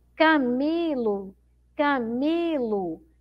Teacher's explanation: Então, a sílaba mais forte é o mi, não é? Esse mi aqui é a que eu demoro mais tempo falando, ó.